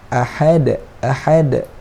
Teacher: makhraj huruf ha di tengah kerongkong.